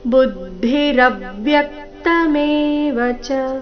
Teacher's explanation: ರವ್ಯಕ್ತ ರ ಮತ್ತೆ ಯ ಮೇಲೆ ಆಘಾತ